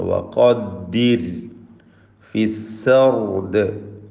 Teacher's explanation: ഖാഫിന് തഫ്ഖീം കൊടുക്കുക, പൂർണ്ണമായ തഫ്ഖീം. റായിന് തർക്കീഖ് നൽകണം, നേർപ്പിച്ച് റായിനെ ഉച്ചരിക്കണം. റായിന് സുക്കൂനും മുമ്പിൽ കസ്റുമുള്ളതുണ്ട്.